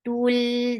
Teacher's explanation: this is not anymore long because this ta is attached with lam